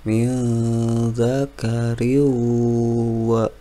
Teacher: maka dibaca idgham bighunah bacanya dengan masuk ke huruf wawu dengan ditahan dengan dengung